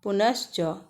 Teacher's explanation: अगर विसर्ग के बाद च रहे या छ रहे तो विसर्ग के स्थान पर तालव्य श का उच्चारण होता है और लिखा भी जाता है यह संयुक्त वर्ण बन जाता है